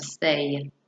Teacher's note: This is a palatal sound. The y sound is a voiced glide sound.